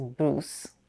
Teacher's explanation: here we use the tense oo sound that appears in words like choose and moose